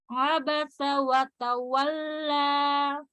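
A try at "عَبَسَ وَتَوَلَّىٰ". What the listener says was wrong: Bukan watawwa, wanya jangan ada dua, tapi jangan ada double jangan ada number gitu. Tapi jalan monyong dan dibuka. Maksudnya dibulatkan dua bibirnya dan dibuka tanpa ada tarikan ke depan.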